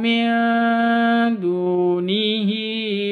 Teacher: Nun mati bertemu dengan dal. Cara bacanya samar didengungkan, disertai dengung. Dunihi, du panjang 2 harokat, waw sukun diawali dengan dhammah.